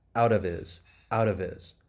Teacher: If that H gets muted and we turn down the volume, we can link that final consonant sound. In this case, of.